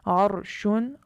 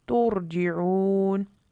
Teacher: را ساکن ہے اور تا پر پیش کی وجہ سے رائے ساکنہ کو پر پڑھیں گے